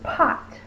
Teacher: my lips are closed and then I pop the air when my lips are closed